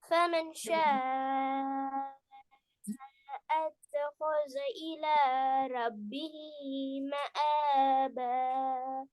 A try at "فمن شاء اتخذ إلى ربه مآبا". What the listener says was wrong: مآبا நீட்டுறது போல. மஆபா சேர்த்து போதுங்களா? அது ஒவ்வொரு மஆபா ஒவ்வொரு எழுத்த ஓதப்படாது. நீட்டுங்க. فمن شاء நீட்டுங்க. ஆறு நீட்டுங்க. إلى ربه ஒவ்வொரு எழுத்த ஓதப்படாது. إلى ربه ஜாயின் பண்ணுங்க, ஜாயின் பண்ணுங்க. ஒன்னோட ஒன்று ஜாயின் பண்ணுங்க. ஜாயின் பண்ணுங்க. இலா வேற, ரப்பிஹி வேற, மஆப வேற ஓதப்படாது.